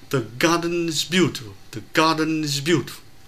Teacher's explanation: the garden is beautiful có hai trọng âm ga và bu